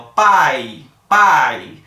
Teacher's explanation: Quando eu falo pai, observa que o A parece que fica mais alto, com mais volume, mais intensidade. Quando eu falo I, parece que dá uma queda. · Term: ditongo decrescente